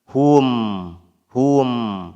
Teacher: Jadi hu kemudian hum ya begitu. Jangan sampai mim sukunnya kebawa dengan huruf ha dhammah sebelumnya ya.